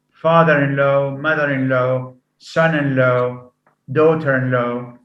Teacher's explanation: the primary stress falls on the first element